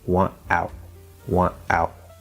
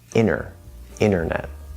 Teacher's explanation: if you have NT and then a vowel, right, at the start of the next word, or also very commonly inside of a word, then you drop the T. Okay, no T, and the N will then connect to the vowel instead. · you drop the T and connect the N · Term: NT plus vowel rule